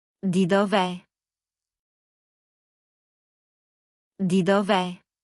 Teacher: dove è would put two vowels together, so Italian glues them